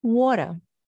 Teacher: he pronounces it with a regional accent where he doesn't pronounce the r